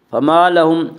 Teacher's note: فما لهم الف مدہ، الف ہمیشہ مدہ ہوتا ہے، الف سے پہلے ہمیشہ زبر ہوتا ہے، الف مدہ کو ایک الف کے برابر کھینچ کر پڑھیں گے